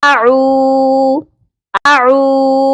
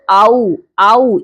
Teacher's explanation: ہم نے عین کو کھینچنا ہے، اعو، اعو، اور اس کو آؤ، آؤ اس طرح نہیں پڑھنا، ایک حرف نہیں ہے، یہاں پہ 2 حروف ہیں اور دونوں حروف حلقی ہیں، حلق سے ادا ہوتے ہیں